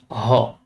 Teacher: ধ্বনিদ্বার থেকে বায়ু কণ্ঠনালী হয়ে সরাসরি বের হয়ে আসে। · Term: কণ্ঠনালীয় ব্যঞ্জন